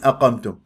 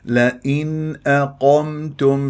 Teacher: النون احبتي فيه مخرجين لساني وخيشومي فلازم بتجيب المخرجين حتى يكون عندك الاظهار صحيح